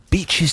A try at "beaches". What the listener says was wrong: That's not bitches, you're saying. Beaches.